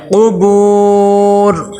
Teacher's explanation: فل قبور، قاف کے اوپر پیش ہے، حرکات غیر مدہ میں سے ہے، پیش کو جب ہم ادا کرتے ہیں تو ہونٹ گول ہوتے ہیں، فل قبور۔ آگے دیکھیں با کے ساتھ آگے واو مدہ آ گئی ہے، واو مدہ کو ایک الف کے برابر لمبا کریں گے